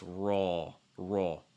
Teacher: last r is strong enough again roll like we mentioned before making sure that it's dark l back of tongue high from your tongue down